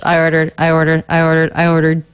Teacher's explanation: i ordered both a little flatter lower in pitch